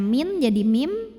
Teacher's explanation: adalah iqlab sebab nun sukun bertemu dengan huruf ba cara membunyikannya bunyi nun sukun diganti dengan bunyi mim sukun